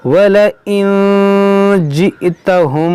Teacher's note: نون ساکن کے بعد جیم یہاں پر اخفا ہوگا، یہاں حمزہ ساکن ہے جھٹکا ہوگا، یہاں دیکھیں اخفاء شفوی ہوگا، یہاں نون میں غنہ کریں گے.